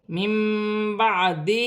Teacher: نون ساکن کے بعد با آ رہی ہے، چھوٹی سی میم لکھی ہوئی ہے، نون ساکن کی آواز کو میم سے بدل کر غنے کے ساتھ ادا کیا جائے گا، اسے اقلاب کا قاعدہ کہتے ہیں۔